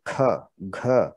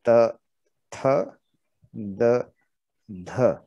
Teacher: तो ये वाले जो व्यंजन हैं इनको हम महाप्राण व्यंजन बोलते हैं, क्योंकि इनमें अलग से अतिरिक्त ऊर्जा लग रही है, हमारी एक्स्ट्रा एनर्जी लगती है थोड़ी सी।